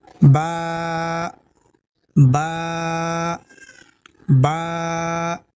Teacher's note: ہم با کو ایک الف کے برابر کھینچ کے پڑھیں گے۔ اب ہمیں کیسے پتہ چلے گا کہ ایک الف کتنا ہوتا ہے؟